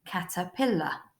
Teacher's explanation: that r at the end isn't making an R sound it's making an uh sound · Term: schwa